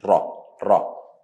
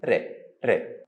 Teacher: letter Ra, sometimes heavy, and sound will be ra, ra, or light, and the sound will be re, re